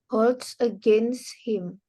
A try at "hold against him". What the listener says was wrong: Jadi yang ada S-nya itu cuma di against. Jadi hold-nya nggak pakai S. Coba diulang.